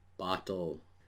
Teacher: For example, bottle, as a vowel-like consonant in the words. Even though the word has 2 syllables, you do not hear the vowel in the second syllable, which is unstressed.